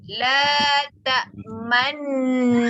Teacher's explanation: Muncungkan bibir 100% semasa menyebut mim berserta dengung sekadar 2 harakat. Sebab nun tu ada tanda sabdu. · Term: Ishmam